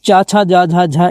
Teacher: इनका उच्चारण स्थान आपका कहां से होता है? तालव्य से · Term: च वर्ग